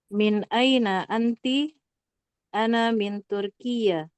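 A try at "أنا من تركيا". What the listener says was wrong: Enggak tasdid.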